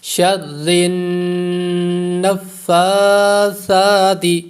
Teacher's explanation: را یہاں پر باریک ہوگا اور نون مشدد کا غنہ ہوگا